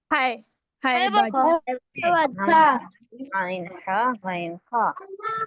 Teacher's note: خا بھی حلق سے آتا ہے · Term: حروف حلقے